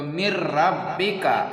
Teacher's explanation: یہاں پر میم کو را سے جوڑ دیا گیا اور یہاں پر نون ساکن ہے، اس کو چھوڑ دیا گیا، کیونکہ اگر ہم اسے پڑھیں گے تو یہاں پر غنہ ہوگا، اسی لیے ہم اسے چھوڑ دیتے ہیں۔ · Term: ادغام